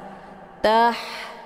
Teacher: Atau ha kecil juga disebut dengan ha pedas, karena saat membaca huruf ha ini ada aliran suara kepedasan yang keluar dari tenggorokan